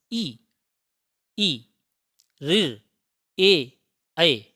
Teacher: इ का उच्चारण करेंगे तो जीव का हिस्सा वह आपके तालू में टच होगा इ इ ऋ ए ऐ समझ गए यह भाषा वैज्ञानिकों का · देखिएगा, अग्रभाग यहाँ पर लिखा है ई का उच्चारण करेंगे तो जीभ का अगला हिस्सा वो आपके तालु में टच होगा।